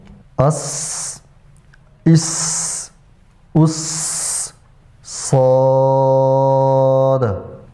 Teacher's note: حرف صاد میں تفخیم پائی جاتی ہے، یعنی موٹا کر کے پڑھنا، پر کر کے پڑھنا